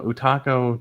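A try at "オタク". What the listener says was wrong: I said otaku, not otako. Otaku.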